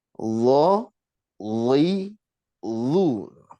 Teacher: Ketika kasroh tetap tebal, loi, tapi tebalnya pakai lidah, bukan pakai bibir ya.